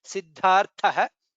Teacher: dha is mahaprana, tha is mahaprana